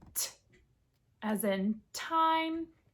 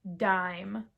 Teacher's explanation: So, you have your unvoiced stop plosive and your voiced stop plosive